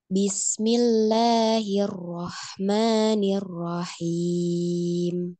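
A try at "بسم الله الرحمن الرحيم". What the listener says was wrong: Masih banyak, masih ini ya getarannya ya.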